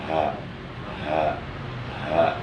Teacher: Adapun 2 huruf yang berada di adnal halak atau di tenggorokan bagian bawah atau di pangkal tenggorokan, yaitu huruf hamzah dan huruf ha besar